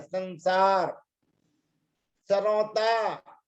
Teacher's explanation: तो यहाँ जो दंत सकार है, उस दंत सकार को यानी कि बोलने के लिए आपकी जीवा दांतों का स्पर्श करना चाहिए, और दांतों का स्पर्श कर रही है तो आप समझ लीजिए कि आपने संसार सही बोला है।